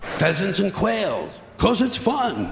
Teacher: he slightly underemphasizes fun